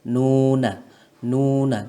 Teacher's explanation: Mad itu panjang dan kita membacanya dua harokat saja Nuna Nuna ndak perlu panjang banget noda ataupun lunak tapi dua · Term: mad asli